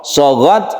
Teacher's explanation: sukun ta dan sukun kaf itu hamas atau mahmus